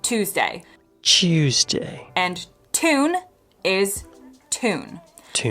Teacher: yod dropping, which is when speakers ditch a Y sound after certain consonants. For example, the word Tuesday in American accents, in my accent, is just Tuesday.